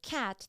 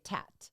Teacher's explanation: is very it's a actually a classic uh sound substitution is they use all their sounds in the front so instead of cat they might say tat